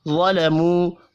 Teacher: वा को पुर पढ़ेंगे, वाव मद्दा को एक अलिफ के बराबर खींच कर पढ़ना है